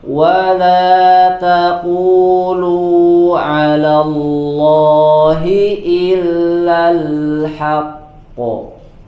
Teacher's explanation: perhatikan Hnya dibaca tipis yang tebal adalah huruf qofnya